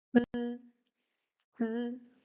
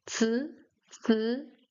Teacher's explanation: When it follows ц, the E becomes voiceless, so it's almost unpronounced. C, E becomes c, c, so you can't hear the E sound.